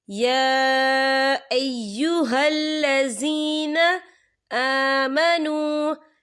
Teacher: या के पर खड़ी हरकत है और इस पर छोटी सी मद भी है, तो हम इसे 3 या 4 हरकत के बराबर खींच के पढ़ेंगे।